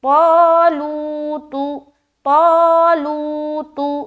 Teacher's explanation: تا ایک باریک حرف ہے، باریکی کے ساتھ ادا کریں گے، اور اس کے اوپر پیش ہے تو اس کو بالکل بھی نہیں کھینچنا، جلد ادا کرنا